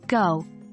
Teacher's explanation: sound V sounds are produced at the back of the mouth using the back of the tongue against the soft part of the roof of the mouth